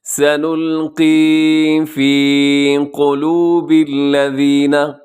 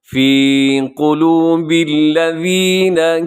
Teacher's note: قلوب میں قاف کو موٹا رکھیے گا اور باقی حروف جو ہیں وہ باریک ہیں